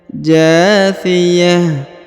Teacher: huruf ta marbutoh yang di ujung yang ini berubah menjadi ha sukun ya, karena berada di ujung ayat atau di ujung bacaan.